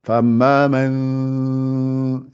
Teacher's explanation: Il y a un son qui sort par la bouche, une partie par le nez.